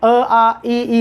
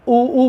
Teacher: जैसे ही ऊ बोल रहे हैं, कौन सक्रिय है? होंठ गोल बन रहे हैं।